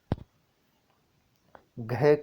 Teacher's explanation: तो घ का उच्चारण स्थान दोस्तों कंठ से होता है।